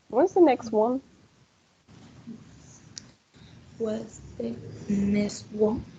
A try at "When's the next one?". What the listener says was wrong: No se olvide de la T al final. When's the next one?